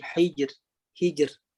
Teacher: Bunyi ra tu atau getaran ra itu nipis. Sebab apa? Sebab hijr, ha tu dari bawah.